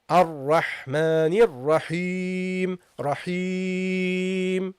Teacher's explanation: when you pronounce the ya, don't vibrate your nose. Don't use al-ghunna.